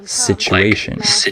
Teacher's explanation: the TU, can be pronounced chu sometimes, like situation